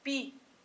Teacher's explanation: Quando você fala Pi-au-i, você está com hiato e esse hiato garante esse acento.